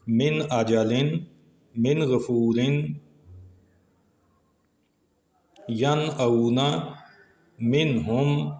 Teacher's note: نون ساکن پہلے کلمے میں اور حمزہ اور غین یہ دوسرے کلمے میں آئے تو اظہار ہوا، نون کو ظاہر کیا۔